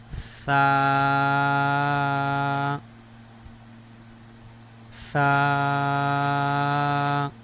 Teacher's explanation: سیٹی آواز نہیں آئیں گے، نرمی کے ساتھ